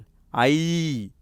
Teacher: ஐ ரெண்டு மாத்திரை அவ இதுவும் ரெண்டு மாத்திரை இந்த ரெண்டுமே நெடில்தான்